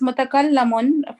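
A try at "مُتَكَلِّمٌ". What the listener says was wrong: No, ismul fa'il is mutakallimun. Kasra.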